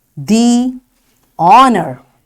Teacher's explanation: we say the honor because the H is silent here as followed by a vowel O